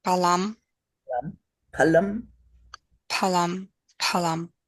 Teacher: no accent just both the same weight